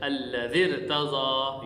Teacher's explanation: را کو اصولی طور پر باریک ہونا چاہیے لیکن را موٹی پڑھی جائے گی اس لیے کہ را دوسرے کلمہ میں ہے